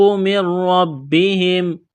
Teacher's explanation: یہاں نون ساکن ہے، اس کے بعد را ہے، را کے اوپر تشدید ہے، تو اس نون کو نہیں پڑھیں گے، نون کا را میں ادغام کریں گے بغیر غنے کے، را اور با کو دبائیں گے تشدید کی وجہ سے۔